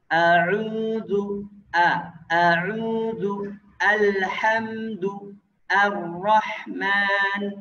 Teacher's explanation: alhamdu al tidak boleh o. Cara bacanya a, nggak boleh o